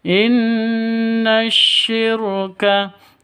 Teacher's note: nun tasydid berdiri sendiri, gunnah musyaddadah, dengung 2-3 ketukan